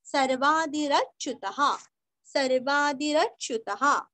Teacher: सर्वादिरच्युतः सर्वादि का दी रस्व र पूरा पढ़ के जैसे हम अच्युता बोलते हैं ना वैसे यहाँ पे रच्युत च आधा यू रस्व और विसर्ग का उच्चारण आधा ह अथवा हा